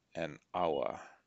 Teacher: it starts with the h but that h is not really pronounced